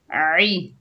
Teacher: आइन के नीचे ज़ेर है, बगैर खींचे पढ़ेंगे आई, आइन को हलक के दरमियान से अदा करेंगे